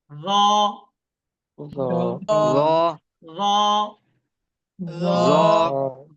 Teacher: র এটা মোটা, ঠোঁটটা গোলের মতো হয়ে আসছে।